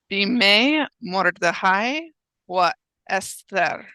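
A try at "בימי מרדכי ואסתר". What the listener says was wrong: Beautiful reading.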